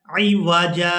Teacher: अब अगर हम यहाँ पर वक़फ़ कर देंगे तो वक़फ़ की सूरत में हमने जीम पर एक ज़बर अदा करनी है और इसको एक अलिफ मिकदार खींच कर अदा करना है